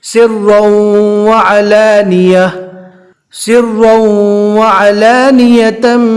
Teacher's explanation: اب دیکھ سکتے یہاں پر سرا، تنوین کے بعد ادغام باگنہ کے 4 حروف میں سے واو ہے، یا واو میم نون، تو یہاں پر ادغام باگنہ یعنی ملا کر گنہ کے ساتھ پڑھیں گے۔